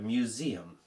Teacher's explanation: And we do say it with a zed. We put an s in there, but we actually pronounce it with a zed.